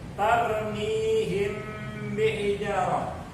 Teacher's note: Maka cara bacanya ifa syafawi. Mimnya ini dibaca samar-samar di bibir.